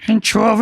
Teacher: the Cork people go long on the second syllable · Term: Cork pronunciation